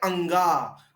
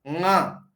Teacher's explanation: न बोलते समय हमको जीभ टकरानी है कंठ में ही, लेकिन उच्चारण करना है नाक से। जैसे आप क बोलते समय जीभ कैसे टकराते हैं, ठीक वैसे ही टकराओ, लेकिन नाक से बोलो ङ